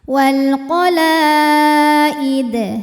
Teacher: Maka la dipanjangkan boleh 4 boleh 5 harokat tapi tidak boleh 2. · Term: mad wajib muttasil